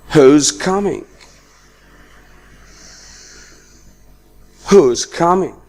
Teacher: In the second example, I pronounced is as z. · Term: weak form